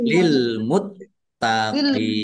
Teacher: Lil muttaqin taknya dibaca double ada tasdidnya.